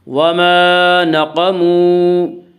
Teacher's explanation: وا مدہ کو ایک الف کے برابر کھینچ کر پڑھیں گے